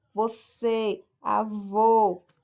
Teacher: E o acento circunflexo indica que aquele som ali é mais fechado.